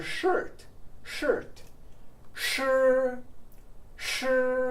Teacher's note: Sh sounds like SH in English but the tongue is curled back